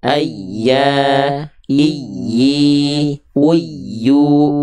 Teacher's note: Itu makhraj hurufnya itu diangkat tengah lidahnya, makanya kalau nggak diangkat nggak jadinya gitu. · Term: huruf ya